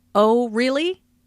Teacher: Notice the rising intonation on really. This shows that the speaker is surprised.